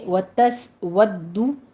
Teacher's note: سین کے اوپر سیٹی کی آواز ہوگی، ہمز پیدا ہوگا